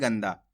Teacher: यहां पर अपन आधा ना का उच्चारण करेंगे